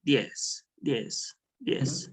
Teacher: Está reemplazando la oclusiva alveolar T por la D, ¿no? No es que lo esté reemplazando, lo está sonorizando, ¿no? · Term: sonora